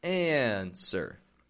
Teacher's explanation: And notice in that word, by the way, it is spelled with a W, A-N-S-W-E-R. The W is not pronounced, my friend. A lot of people force that W in there and get an answer.